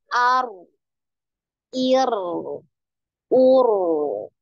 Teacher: sekali getaran ar. Kemudian ada aliran suara gitu ya. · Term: tawasutnya